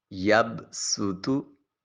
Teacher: سین یہ حرف صفیریہ ہے اور اس کی آواز کے وقت سیٹی کی آواز آئے گی۔